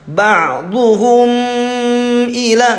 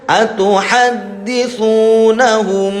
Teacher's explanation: mim sukun menghadapi ba namanya ikhfa syafawi. Harus agak lama, enggak seperti ba'dhuhum ila.